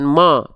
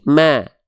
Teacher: Maka kalau mendapati ada vokal A tipis harokat fathah, jangan lupa dilafalkan buka mulutnya, jangan cuman asal buka mulut, tapi sambil senyum. Maka mimnya dilafalkan bukan mo, tapi ma.